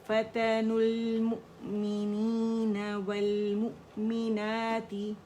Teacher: اس کو لام سے جوڑ دیا ہے، فتن المؤمنین والمؤمنات، والمؤمنات، اور حمزہ پہ جھٹکا دینا ہی ہے